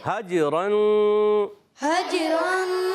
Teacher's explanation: حجرن میں ہا کو جیم سے ملانا ہے، جیم میں قلقلہ ہو جائے گا کیونکہ جیم حرف قلقلہ میں سے، اور یہاں آواز آئے گی حج.